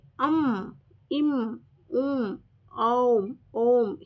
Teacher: ಸೇರಿಸಿ ಓದ್ತೀವಿ ಅಂ ಇಂ ಉಂ ಔ ಓಂ ಹೀಗೆ ಸ್ವರದ ಮುಂದೆ ಅನುಸ್ವಾರ ಬಂದಾಗ ಮಕಾರಕ್ಕೆ ಸಮೀಪವಾದ ಉಚ್ಚಾರ ಬರುತ್ತೆ ಇದರಲ್ಲೆಲ್ಲ ಏನು ಉಚ್ಚಾರ ಮಾಡ್ತೀವಿ ನಾವು ಮಕಾರದ ಉಚ್ಚಾರವನ್ನ ಮಾಡ್ತಾ ಹೋಗ್ತೀವಿ ಪದಗಳ ಮಧ್ಯದಲ್ಲಿ